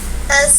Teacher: Karena huruf sa ada hams, berarti suara napas kita yang mengalir. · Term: rokhwah